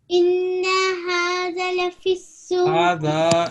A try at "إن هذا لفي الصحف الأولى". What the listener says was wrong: هذا long little long إن هذا Now, there is no jerk on ula and suhufi. لفي الصحف لفي الصحف الأولى not ula not ula لفي الصحف الأولى. No, هذا. There are three mistakes in this verse. There were some issues, but here three mistakes. هذا 2 seconds. Okay, 2 counts. لفي الصحف quickly joining without any stretch. الأولى without any jerk.